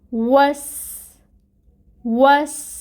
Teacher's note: واو، ہونٹ اچھے سے گول کریں، اور پھر فتحہ کی حرکت کو آپ نے ادا کرنا ہے